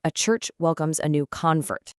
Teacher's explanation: But if we use it as a noun, the stress jumps back to the first syllable.